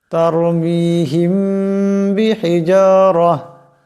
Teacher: মিম সাকিনের পর যদি বা আসে তবে সেই মিম সাকিনকে এক আলিফ পরিমাণ গুন্না করিয়া পড়তে হয় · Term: ইকফায়ে শাফবি